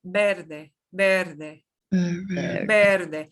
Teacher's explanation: V like a be, but very soft, very soft. Eh, Breve, Verde.